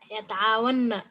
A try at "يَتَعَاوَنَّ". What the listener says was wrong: Yes, there will be a shadda. Yata'awanna.